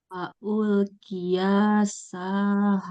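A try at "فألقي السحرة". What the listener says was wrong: Jangan panjang. Fa'ulqiyas saharatu.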